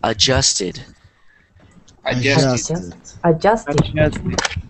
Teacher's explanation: you don't really hear the first D because it sounds like it doesn't exist because you don't really pronounce it